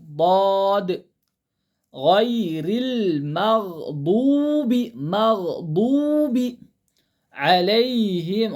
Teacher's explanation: ضاد کا طریقہ زبان کی نوک کو لیفٹ داڑھ کو لگا کے پڑھنے سے ضاد نکلتا